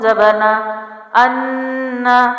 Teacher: غنہ کیا اور جلدی چھوڑا، جھٹکا نہیں دیا